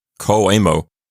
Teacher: the N goes away and you just get co-amo